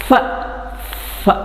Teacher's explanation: air escapes with hissing sound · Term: ಫ್ರಿಕೇಟಿವ್ಸ್